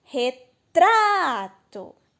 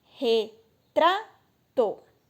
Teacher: o tra é a sílaba do meio, que é a mais forte